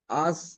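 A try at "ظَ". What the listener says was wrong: এখানে আপনার যদি আস বলা হয় তাহলে তো সিনের উচ্চারণ হইল, এখানে সায়ের উচ্চারণ করতে হবে আস ইস উস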